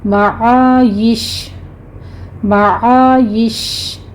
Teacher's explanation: معایشہ ہے، تو ہے یہاں پر وقف مطلق ہے. اگر آپ نے وقف کرنا ہے پھر شین کے اوپر تفشی ہوگی